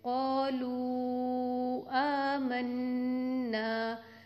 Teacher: ہم نے next letter کو جب دیکھا، نیکسٹ ورڈ کو دیکھا، وہاں پہ حمزہ آ رہا تھا، تو واو مدہ کے بعد حمزہ آ گیا تو یہاں پہ ہم مد منفصل کریں گے۔ مد منفصل کی ڈیوریشن، اس کی مقدار کتنی ہوگی؟ 2 الف، یا پھر ہم اس کو 4 کاؤنٹس دے کے پڑھیں گے۔